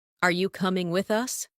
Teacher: Rising tone for question.